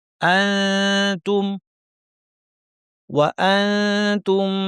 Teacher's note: হুন্নালি বাসুল লাকুম ওয়া আনতুম আনতুম বলার সময় যেটা আমাদের করতে হচ্ছে সেটার নাম হচ্ছে ইখফা। নুন সাকিন তা এসেছে, আমরা জিহ্বাটাকে তায়ের মাখরাজের কাছাকাছি নিব, কিন্তু লাগাবো না এবং নাক থেকে গুন্না করব।